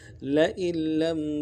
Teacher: حمزہ کو واضح کریں گے اور نون نہیں پڑھیں گے، آگے لام کے ساتھ ملائیں گے، تشدید ہے، اور لم میں میم ساکن غنہ کریں گے۔